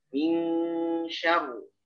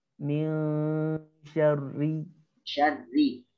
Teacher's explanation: Tapi ketika diwasol, karena dia berharokat kasroh, ya, maka dia dibaca tipis, gitu. Jadi kalau wakof, memang dia dibaca tebal, syarru. Tapi ini dia nggak wakof, ya, dia wasol. Jadi mesti disempurnakan sifat tipisnya.